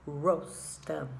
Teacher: the r remember at the beginning of the word especially remember to roll it